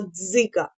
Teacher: а голосний наступне слово Дзига Подивіться знову букви ДЗ д і з означають один звук ДЗ і він буде твердим приголосним тому позначили його відповідно и голосний Ґ приголосний твердий і а